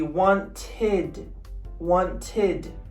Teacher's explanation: So the ed is pronounced id, not ed, id. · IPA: /ɪd/